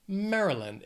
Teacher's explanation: this state has three syllables the stress is on that first syllable